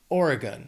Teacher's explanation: 3 syllables, stress is on that first syllable. Oregon. That last syllable sounds like gun because it's unstressed, so it's just Oregon.